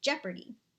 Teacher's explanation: a dactylic foot is composed of one stressed syllable followed by two unstressed syllables, as in jeopardy